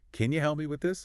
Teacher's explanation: Can you often reduces to can you? The vowel gets shorter, weaker. Yeah. Unstressed. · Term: can ya